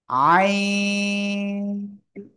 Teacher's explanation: গলাটা চেপে পড়তে হবে